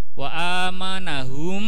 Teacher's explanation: Mem mati bertemu mem. Nama bacanya idgham mimi.